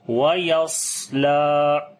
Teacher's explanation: صفت ہمس یعنی سانس جاری کریں گے، اور صفیر یعنی کہ سیٹی کی آواز آئے گی۔ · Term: صفت صفیر